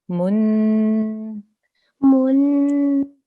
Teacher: Now we have a meme with a tanveen of dhamma. So that again will be pronounced for 2 seconds with a nasal sound.